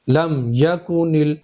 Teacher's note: दोनों होठों के खुशकी के हिस्से से मीम अदा होता है।